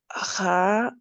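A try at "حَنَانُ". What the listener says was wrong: Attention, parce que moi j'entends un ha. He. He. Hanan. Hanan. Hananu. En fait, moi, au début, après, je sais que c'est difficile de sortir cette lettre des fois, mais en fait, toi, tu écoutes ce que je dis, toi, tu dis Hananu, Hananu, tu vois. Moi, c'est ce que j'entends en tout cas. Mais, alors que c'est Hananu, Hananu.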